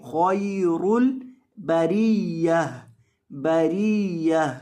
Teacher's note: خا کو اور را کو دونوں کو موٹا کریں گے